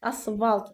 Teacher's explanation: Bir qrup sözlərdə f samiti v kimi tələffüz olunur. Asfalt yazıb asfalt şəklində tələffüs eledyirəm.